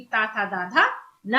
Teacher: हम उच्चारण कर रहे हैं तो हमारी जिब्या दांतों को टच कर रही है उच्चारण करते समय, तो ये हमारे दांत से उच्चारण होगा इन वर्णों का।